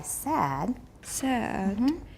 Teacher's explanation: because it's a tonic stress, we start high